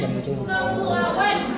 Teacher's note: Seolah-olah kita membunyikan huruf w padahal dalam tertulisnya itu tidak ada. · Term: bunyi w